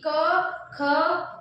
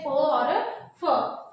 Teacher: जिन वर्णों के उच्चारण में तार तत्व मतलब कि गुंजन या प्रकंपन पैदा ना हो उन्हें अघोष वर्ण कहते हैं